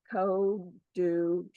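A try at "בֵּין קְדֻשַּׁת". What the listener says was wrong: No O. There's no O there.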